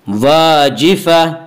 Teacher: واجفہ، الف مدہ الف ہمیشہ مدہ ہوتا ہے، الف سے پہلے زبر ہوتا ہے، الف مدہ کو ایک الف کے برابر کھینچ کر پڑھیں گے۔ واجفہ آگے آیت ہے، وقف کریں گے، دو زبر پر وقف کرنا ہو، گول تا پر وقف کرنا ہو تو گول تا وقف کی صورت میں ہائے ساکنہ بن جاتی ہے۔